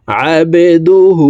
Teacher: এই হাকে ঠোঁট গোল করে এক আলিফ টেনে পড়ব